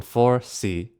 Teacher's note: tone 4 C the falling tone falling just like the shape of the S